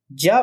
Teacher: ज वर्ण तालप वर्ण है क्योंकि इसका उच्चारण स्थान तालु होता है।